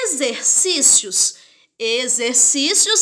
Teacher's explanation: chama a palavra fazendo a sílaba tônica é zen · exercícios a sílaba tônica é a penúltima paroxítona